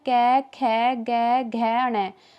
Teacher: जो कै वर्ग होते हैं वो सारे कंठ से उच्चारित किए जाते हैं।